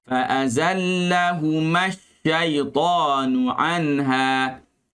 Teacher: lam tekankan sedikit, jangan kuat sangat kerana ia adalah huruf pertengahan